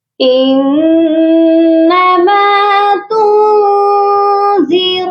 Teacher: نون مشدد پر غنہ ہوگا کیونکہ نون مشدد پر ہمیشہ غنہ کرتے ہیں.